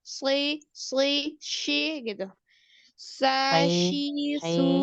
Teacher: Ini hurufnya nggak ada huruf-huruf tebal. Jadi pangkal lidah nggak boleh naik.